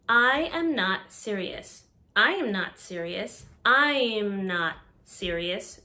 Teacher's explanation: notice the y sound that's added